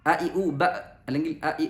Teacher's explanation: മഹ്റജ് തൊണ്ടയുടെ താഴെ അറ്റത്ത് ടച്ച് ചെയ്യും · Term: ഹംസ